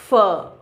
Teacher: lips और अपर teeth completely सट नहीं रहा है, एक नैरो गैप रह जाता है and air passes through a lot of friction · active और पैसिव आर्टिकुलेटर कंप्लीट सटता नहीं और इसीलिए एयर पैसेज ब्लॉक तो नहीं होता, पर उनके बीच का गैप बहुत कम होता है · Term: फ्रिकेटिव्स, फ्रिकेटिव साउंड